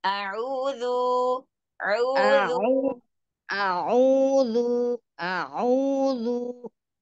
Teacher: Ainnya nggak mau masuk hidung.